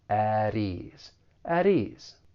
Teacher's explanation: we can link that flap T with the vowel sound in ease.